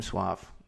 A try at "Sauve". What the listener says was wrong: the A comes before the U, which I do maintain is an optical illusion for all English speakers.